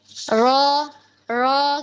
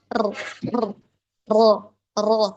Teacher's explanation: ketika ngelafazin huruf ro memang harus ada takrir yang namanya getaran itu